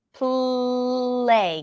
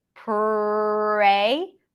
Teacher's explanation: okay La so now we're comparing it with the light L the light L touches the upper palette whereas the strong R does not with the L when you stretch it you hear the contact